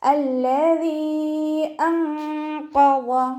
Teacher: ദാലിൻ്റെ കൂടെ യാ മദ് വന്നിട്ടുണ്ട്. ആ മദ്ദക്ഷരത്തിന് ശേഷം അടുത്ത വേർഡിലായിട്ട് ഹംസയും വന്നു. അപ്പോൾ 2 4 ഹർക്കത്ത് നീട്ടിക്കൊടുത്തിട്ട് പാരായണം ചെയ്യുക കേട്ടോ. മദ് ജായിസ് മുൻഫസിലാണ്, 2 4 ഹർക്കത്ത് നീട്ടിക്കൊടുക്കുക.